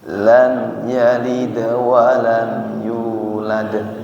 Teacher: Dal enggak boleh ada anginnya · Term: huruf Dal